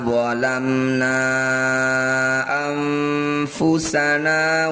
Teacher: Cara bacanya na yang bertanda layar panjangkan 5 harokat. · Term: mad jaiz munfasil